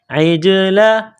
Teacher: عین کو جیم کے ساتھ ملائیں گے، جیم کے اوپر قلقلہ کریں گے